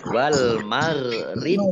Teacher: baknya dibaca sukun maka menjadi qalqalah, ya, atau memantul, ditampakkan pantulannya